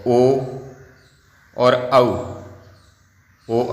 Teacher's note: ओ और औ का कंठोष्ठ है उच्चारण स्थान